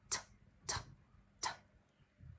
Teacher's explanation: So put your fingers and check t. It's completely voiceless. It doesn't vibrate. It's just air coming out of your mouth.